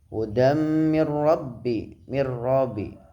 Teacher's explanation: Hudam mir rabbi terdapat bacaan idgham bila hunah, sebabnya ada nun sukun bertemu huruf ra, dibaca idgham tanpa hunah